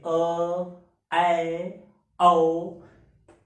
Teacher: अर्ध विपरीत स्वर जिसमें मुख द्वार आधा खुला हो